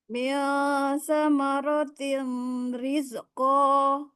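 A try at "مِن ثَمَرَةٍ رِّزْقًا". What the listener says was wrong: Nggak, dia nunnya hilang, jadi ro 100%. Samaratir, samaratir.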